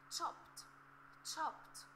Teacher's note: we should pronounce the letter D as T, T.